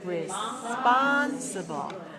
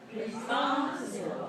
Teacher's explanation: Responsible has 4 syllables, and it's stressed on the second.